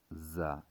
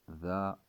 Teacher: آواز سے بظاہر تو یہ چاروں ایک جیسے لگ رہے ہیں پر ان کے اندر فرق یہ ہے ذا اور زا. زا کے اندر سختی سی ہے اور ذا یہ بغیر سختی کے پڑھا جاتا ہے